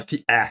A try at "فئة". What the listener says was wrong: Pas, toi, tu fais فئة. Tu fais un عين.